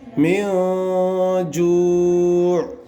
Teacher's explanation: نون کی آواز کو ناک میں چھپا کر پڑھیں گے. ظاہر نہیں کرنا ہے، اخفا کرنا ہے.